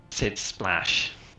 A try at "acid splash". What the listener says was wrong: Sid Splash, it sounded like. The A was missing. It's Sid Splash.